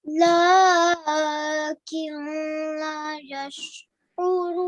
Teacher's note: because the next letter is lam and the noon sakin, there will be no nasal sound.